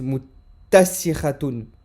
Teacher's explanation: C'est comme s'il y avait deux ta. Donc on insiste. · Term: la shadda